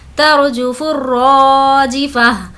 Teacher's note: यहाँ पर अलिफ लाम को नहीं पढ़ेंगे, फा को रॉ से मिलाएंगे · रॉ को खींचेंगे क्योंकि अलिफ मद्दा है। अलिफ मद्दा मतलब अलिफ से पहले ज़बर हो तो वो अलिफ मद्दा होगा।